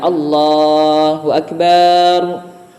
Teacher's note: yang sering juga terjadi adalah memanjangkan huruf ba pada kata akbar